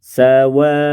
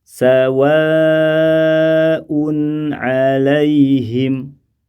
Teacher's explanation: Berarti kata sawa'un, seandainya kita berhenti pada kata ini karena kehabisan nafas misalnya, maka ketika waqaf, ketika berhenti bisa dibaca 4 dan bisa juga dibaca 6.